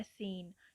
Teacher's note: ਸੋ ਜੋ ਸੀਨ word ਹੈ ਉਹਦੇ ਵਿੱਚ ਵੌਲ ਫਨੇਮ ਸ਼ੋ ਹੋ ਰਿਹਾ ਹੈ ਕਲੋਜ਼ ਫਰੰਟ ਅਨਰਾਊਂਡਡ